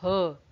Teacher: स्वर यंत्रीय, ये आपको याद होगा जब हमने उच्चारण स्थान पढ़ा था, केवल एक ऐसा वर्ण है जो हमने कहा था जो स्वर यंत्रीय है, और वो है आपका ह। क्योंकि ह जो है वो मुंह का कोई भी पार्ट कहीं टच नहीं करता, वो सीधा आपके अंदर से निकलता है